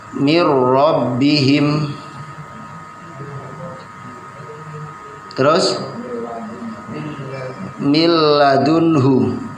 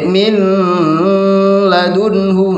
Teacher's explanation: Kalau bila guna berarti tanpa ada guna ketika bertemu dengan lam dan ro.